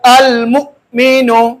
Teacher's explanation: حمزہ پر جزم کی صورت میں جھٹکا لگا کر پڑھیں گے